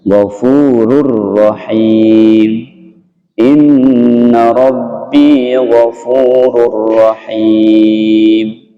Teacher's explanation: idgham bila gunnah artinya masuk tanpa didengung · tanwin bertemu ro ini hanya membentuk tasydid, ghafurur rahim, bukan dipanjangkan, bukan digunnahkan, bukan begini ghafurur rahim, bukan begitu, tapi hanya membentuk tasydid saja, lebur ya, run menjadi kepada ro, ghafurur rahim, inna rabbi ghafurur rahim.